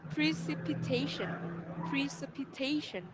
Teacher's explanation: Nó sẽ có 5 âm tiết ạ. Và mình sẽ nhấn vào trọng âm thứ tư.